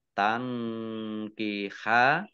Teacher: nun sukun bertemu dengan huruf kaf, bacaan ikhfa dibaca samar-samar.